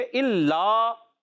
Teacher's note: ٹھیک ہے. الا یہاں لام مشدد ہے, ذرا رک کر ادا کریں گے